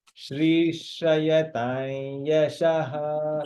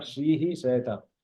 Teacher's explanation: Not Shrihi Shrayatam. The Visarga is only said at the end of the mantra.